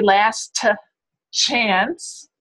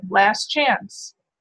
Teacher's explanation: That T just gets omitted.